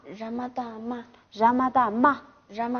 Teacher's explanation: 那么这个俺念那么的话，原来的低调变成高调